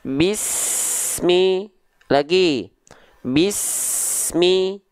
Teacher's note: juga bunyi es-nya itu desisan es-nya itu terputus contoh Bismillahi Bismillahi antara s dengan Mi tidak boleh ada Jedah Hening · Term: Sin sukun